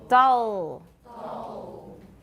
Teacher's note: You don't even have to put your tongue tip on your alveolar ridge for a dark L. Dull. 舌 尖 没 有 顶 到 没 有 关 系 for L after a vowel.